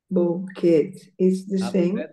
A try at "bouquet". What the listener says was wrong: Not tea, no tea. Bouquet.